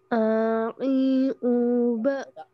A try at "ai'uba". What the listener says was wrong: Nah, ini sama kayak tadi, ain sukunnya terhenti. Ingat ketika sukun jangan ai'uba, jangan terhenti, tapi ngalir. Ai'uba.